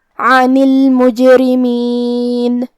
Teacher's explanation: حرف الرا کا حکم ہے ترقیق، لہذا ہمیں را کو پتلی آواز میں پڑھنا ہے